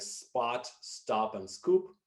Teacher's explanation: pronounced without aspiration after initial S, as in words like spot, stop, and scoop.